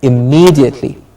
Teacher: So the vowel sound that is being stressed here is me, E, me, immediately.